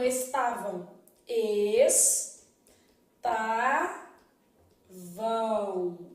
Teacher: o m tem som de u também vai passar por esse processo de som de semivogal